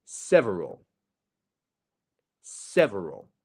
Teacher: you see the stress syllable is the Sev I'm not going several or several that would be the difference